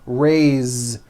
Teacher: Now this word is a bit unusual because even though it is spelled with an S, it's pronounced with a voiced Z.